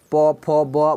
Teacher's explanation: अब पवर्ग में होठ का, प फ ब बोलिएगा ना, तो दोनों होठ सट जाएगा, तो होठ का यहाँ लिख देते हैं, होठ का स्पर्श।